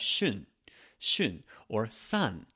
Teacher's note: The tongue goes to the top of the mouth and it's pronounced like an N. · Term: normal N sound